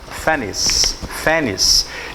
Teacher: A pronúncia não tem X com som de KS aqui não.